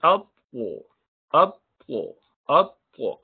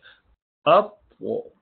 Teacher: here the sound continues because of qalqala that you do in the shadid letter, up. So if you do not make it elevated, it would be like ta.